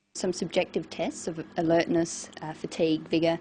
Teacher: she uses rising and falling tones and a tone that's neither Rising nor falling